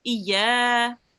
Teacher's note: Make sure to do the ya a tiny little bit longer